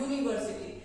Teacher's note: It's starting with a U, which is a vowel, but as we are pronouncing it, it's giving us a Y sound.